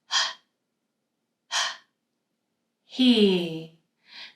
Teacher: So you hear we have this kind of soft sound like we're kind of getting the glauus kind of close and creating some kind of a little friction but with only air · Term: h sound